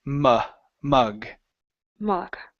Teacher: This sound is lazy. Your tongue is on the bottom of your mouth, and you're just going, okay? You're barely doing anything.